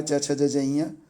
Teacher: तालव्य मतलब तालु से, इसमें च वर्ग होता है